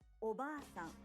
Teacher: The a in ba is held for 2 claps. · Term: long vowel